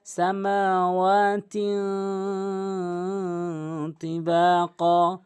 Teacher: অধিকাংশ লোক ভুল করে সামাওয়াতিন, এখানে বলতে হবে সামাওয়াতিন তিবাকা। তিন এখানে গুন্না করতে হবে, ইকফা গুন্না